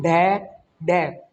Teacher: जब हम इसको बोलते हैं ना तो हमारी जीभ एक बार ऊपर उठती है फिर नीचे आती है। आप बोल के देखो ढै ढै, ऊपर जाके नीचे फेंकना। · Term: उत्क्षेपित